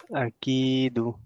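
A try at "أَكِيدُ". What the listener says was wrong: don't stretch alif. Ki would be stretched. Akidu.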